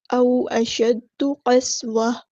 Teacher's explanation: جب ہم یہاں پہ وقف کریں گے، گول تا کو ہاں میں چینج کر دیں گے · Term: وقف بالابدال